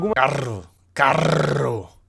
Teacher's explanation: Falam um R seco com a língua atrás dos dentes